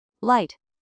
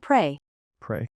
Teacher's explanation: L is made with the tongue touching the roof of your mouth